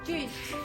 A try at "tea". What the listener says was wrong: Not eat. Tea. Tea. Tea. Without the t at the end.